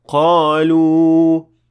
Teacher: And in this word, you're supposed to extend again for 2 harakat since this is a waw and it is a long vowel